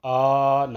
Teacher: کھڑا زبر ہے اس کو ایک الف کے برابر کھینچ کر پڑھیں گے، آنا ایسے۔ باشروہن، یہ با الف زبر با، بعض لوگ اس کو جلدی باشروہن، تو اس کا غور نہیں کرتے کہ یہاں الف مدہ ہے، اس کو فل آنا پڑھ دیں گے۔